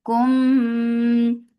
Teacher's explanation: this is idgham with gunna, so keep the sound in your nose for a longer time